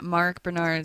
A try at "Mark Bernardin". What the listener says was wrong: You're missing the last syllable of his last name, though. It's Mark Bernardin. Mark Bernard is a two first name, though.